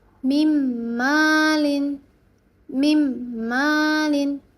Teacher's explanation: Lalu nun sukun atau tanwin ketika bertemu dengan huruf mim. Di sini ada min malin, tapi karena dia idgham bighunah, maka dileburkan menjadi mimmalin.